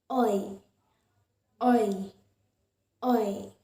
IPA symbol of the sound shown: ɔɪ